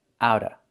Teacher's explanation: you don't hear the vv sound. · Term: fast D